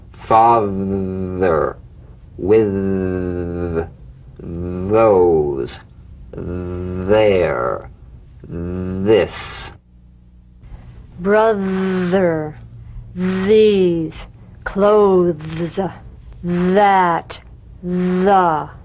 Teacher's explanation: The voiced tongue point to teeth fricative th. The vibrant sound of the voiced th has a quality much like that of the v.